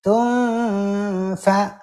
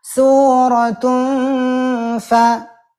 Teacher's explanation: tidak cukup dengan tunfa itu samar betul, tapi disertai dengan gunnah yang harus ditahan. Tunfa, gitu ya.